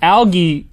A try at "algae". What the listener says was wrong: The G is pronounced differently in algae.